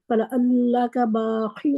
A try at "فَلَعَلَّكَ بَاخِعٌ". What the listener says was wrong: فَلَعَلَّكَ، سب حرکات کو پورا پڑھیں. فَلَعَلَّكَ نہیں کرنا، فَلَعَلَّكَ یعنی کہ ان کی حرکات پوری کرنی ہے. فَلَعَلَّكَ